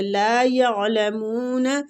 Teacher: آگے حلق میں عین کو لے کے جائیں گے